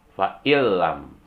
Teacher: Misalnya nun mati ketemu la, dibaca fa'ilam, tidak boleh dibaca fa'inlam. Masukkan bunyi nun matinya ke la menjadi fa'ilam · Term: idgham bila gunnah